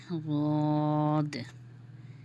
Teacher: زواد جو ہے اس کا مخرج کیا ہے؟ جب دونوں موٹے کنارے اوپر کی دونوں داڑوں کے کناروں سے لگیں تو زواد ادا ہوتا ہے